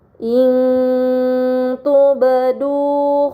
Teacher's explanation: Pada kata in tubdu terdapat nun sukun bertemu dengan huruf ta. ini dinamakan ikhfa hakiki. Maka nun sukun dibaca secara samar dengan gunah yang dipanjangkan. Kemudian pada kata tubdu terdapat huruf ba sukun ini dinamakan qalqalah maka harus dibaca secara memantul.